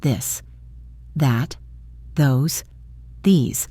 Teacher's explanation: for the softer, voiced th sound, like in this, your tongue is in the same position, but this time you use your voice. You should feel a slight vibration.